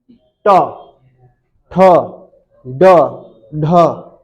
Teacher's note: जब जीभ मुड़ जाती हो, जब जीभ इस कंडीशन में आती हो, इस कंडीशन में, ट, ठ, ड, ढ बोल के देखो, है ना, जीभ मुड़ रही है ना, मुड़ के क्या ले रही है, झटके ले रही है, तो समझ लेना वो क्या है, मूर्धा।